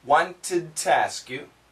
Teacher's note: We don't say to, it's more of a t.